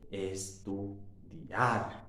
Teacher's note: Vemos que ahí hay un diptongo porque hay una vocal cerrada y una vocal abierta juntas, pero el acento fuerte está en la vocal abierta